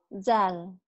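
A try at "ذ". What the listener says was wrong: Zal, agak rapuh dikit. Ini dal, dadaku. Ini da, ya. Yang ini zal, keras. Ini zal. Ini agak rapuh. D-Z-L.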